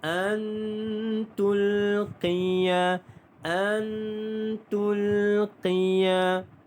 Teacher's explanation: nun mati bertemu dengan huruf ta dengung 2 harakat ikhfa hakiki